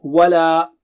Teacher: La has a mad there and this is a wavy mad, so you have options, so we'll take double stretch there.